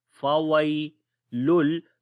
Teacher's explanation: یا کے اوپر جزم ہے، اس سے پہلے زبر ہے، نرم پڑھیں گے، یا لین ہے ، فویلل، تو تنوین کے بعد لام آ گیا، ادغام کریں